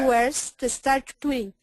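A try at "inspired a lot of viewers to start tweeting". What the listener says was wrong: You missed a little bit of the D again. Inspired a lot of viewers.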